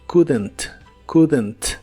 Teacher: No pronuncias la O ni la L de esta palabra, pero sí le agregas un sonido como de E muy suave entre la D y la N para que se pueda pronunciar mejor.